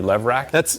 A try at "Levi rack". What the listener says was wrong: you're mispronouncing it. Levi rack. Pretty sure there's an I. Pretty sure.